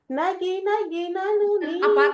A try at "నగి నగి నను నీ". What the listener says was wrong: అలా పైకి వెళ్ళిపోకు. నగి నగి నగి నగి కొంచెం కిందకుండు.